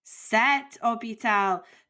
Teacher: Even though it starts with an H, remember in French that H is considered silent, so you treat it like a vowel.